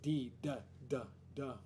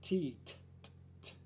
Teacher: D, D, D, D, which is voiced, and T, T, T, T, which is not.